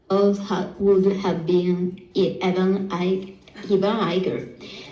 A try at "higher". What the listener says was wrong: Now, here was the problem. How do you pronounce that word? Higher. Higher. So that GH is silent. It's silent. The GH is silent.